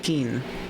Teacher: you just don't like exhale as much after the consonant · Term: soft consonants